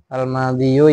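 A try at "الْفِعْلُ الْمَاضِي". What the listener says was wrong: Itu bukan al madhiyu, al fi'lul madhi. Isim mangkus. Seperti ma'anin tadi loh.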